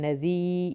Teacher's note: नज़ीरुम मुबीन, नज़ी, जाल को नरमी से अदा करना है। नज़ी या साकिन की वजह से हमने इसको खींचा है।